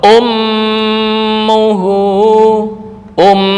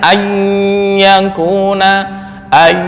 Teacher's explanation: ketika masuk ke khaisyum secara langsung tanpa melalui samar-samar itu lebih kuat ya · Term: gunah yang paling kuat